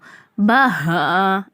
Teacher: ஹா அடித்தொண்டை ஹா கனமா ஓதணும்